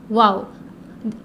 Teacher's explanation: واو اس کا مخرج دونوں ہونٹوں کو گول کرنا ہے